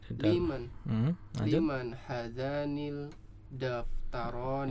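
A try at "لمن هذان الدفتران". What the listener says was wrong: Iya, ini dal huruf syamsiah. Jadi lamnya melebur. Liman hadzanid.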